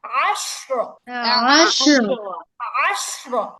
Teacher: এখানে ডাবল উচ্চারণ হবে না, জাস্ট আইন জবর আ।